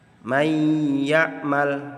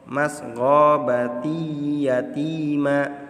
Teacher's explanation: Idgham ini yang biguna dibaca dengan dengung ya sepanjang 2 harokat. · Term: idgham bigunnah